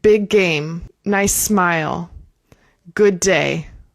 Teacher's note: This is another situation where we're going to link the words. So if two words have the same sound, we only say it once